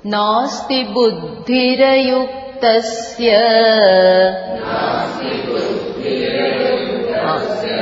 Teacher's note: After buddhi, that ra has to be pronounced full. It is not half, okay?